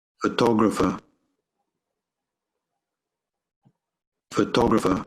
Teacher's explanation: you have emphasized the second syllable